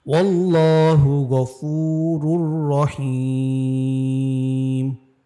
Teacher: যে লামটা আছে এটাকে মোটা বা মোটা বা পুর করে পড়তে হয়। যেমন ওয়াউ লাম জবর ওয়াল, লাম খারা জবর ল, ওয়াল্লাহু গফুরুর রহিম।